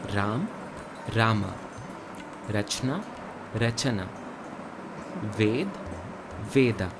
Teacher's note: Ved, Veda. Notice how Sanskrit adds an A sound to the end of each letter, while Hindi does not. Almost like there is a halant on the end of each letter. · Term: Shwa